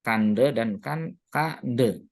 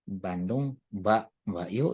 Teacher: Yang de itu kita sebut dengan pre-nasalized stop ya. Jadi bunyi nasal sebelum bunyi letupan.